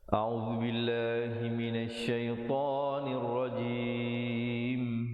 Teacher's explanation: Syai bukan syai, tapi yang betulnya syaitonir rajim, dan diwaqafkan dengan menyempurnakan huruf mim dengan ditutup mulut rapat dengan kadar 2, 4 atau 6 harakat. Sekali lagi kita dengar dan ikut bersama-sama.